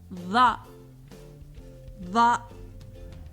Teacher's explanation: Similar to the TH sound in that, but more emphatic and darker, like this, ضاء ضاء.